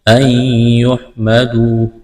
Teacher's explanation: واو مدہ ہے، ایک الف کے برابر کھینچنا ہے۔